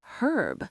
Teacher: This word is interesting because the difference is often regional. In British English, the H is pronounced, so they would say herb. But in American English, which is often taught globally, the H is silent.